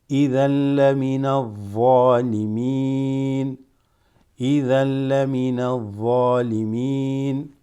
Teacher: Actually, you see there, I was going to say limal, mal, but this huruf shamsiya. So then from the noon, you're going to go straight into the dhad here.